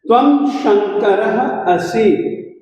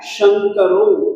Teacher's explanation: र के बाद में विसर्ग है, विसर्ग के बाद में अस्वर है, तो इस विसर्ग को उ हो जाता है। र का अ और विसर्ग का जो उ बना तो ये बन गया शंकरो।